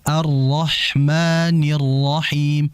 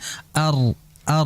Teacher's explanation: Ar ar itu ditahan juga dengan getaran